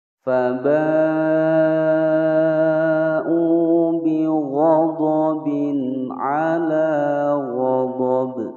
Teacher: Faba, fa pendek, ba'u panjang 5 ketukan, mad wajib mutasil